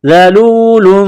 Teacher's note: زبان کا سرہ تھوڑا سا باہر نکالیں گے ذال کو پڑھتے وقت